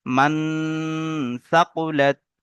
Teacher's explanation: হরফ ইকফা 15টি অক্ষরের মধ্যে থেকে তা এসে নুন সাকিনের আওয়াজকে নাকে তুলে একালি পরিমাণ গুণনা সহ পড়তে হবে, একে ইকফায়ে হাকিকি বলে।